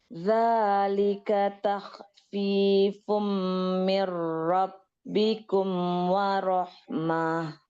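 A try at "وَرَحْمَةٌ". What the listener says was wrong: Nggak panjang. Warahmah. Mah. Haknya yang ada aliran suaranya. Mah. Karena dia ada rokoah ya.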